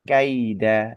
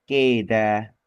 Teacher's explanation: seperti bacaan keda atau harusnya kaida tapi jadi ke g ya seperti kita ee coba memadukan antara a dan i jadi e padahal tidak seperti itu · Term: diftong